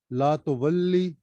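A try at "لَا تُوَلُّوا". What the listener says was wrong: ला तुवल्लू, ये जो आखिर में या पढ़ रहे हैं ना इसको पे या वाव इसको थोड़ा सा वाज़िह करें।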